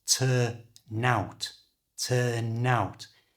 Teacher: and it's used all the time by native English speakers who pronounce it as one word by moving the N from the end of turn to front of the O of out so turn out becomes turnout turnout and at a natural speed · pronounce it as one word by moving the n from the end of turn to the front of the o of out